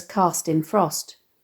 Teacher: the harsh consonance of the sibilant /s/ and the plosive /t/ sounds enhancing the sense of inertia